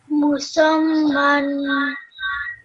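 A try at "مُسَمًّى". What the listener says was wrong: Okay, so because of the shadda, I want you to make sure that you join the seen and the meme with a bit of force. Okay, you still need to keep practicing that shadda. Because of the shadda, you have to do the seen and the meme with a bit of force.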